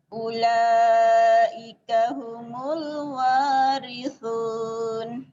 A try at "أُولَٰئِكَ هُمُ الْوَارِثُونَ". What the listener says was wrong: Jadi mungkin sementara jangan bermain cengkok dulu ya. Kalau belum ini, biasa aja, datar aja. Ulaika humul, dengerin.